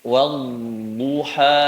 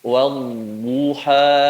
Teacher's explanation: Sisi lidah tempelkan ke gigi geraham yang atas, kemudian digeser ke depan. Saat mengucapkan huruf dod yang domahnya, angkat pangkal lidahnya sehingga menjadi tebal sifatnya. Bu, bukan du.